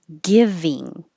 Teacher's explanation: the first vowel the stressed vowel is i as in hit so not too high like e